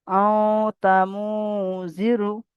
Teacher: নাকে তুলে এককালি পরিমাণ গুণনা করে পড়তে হবে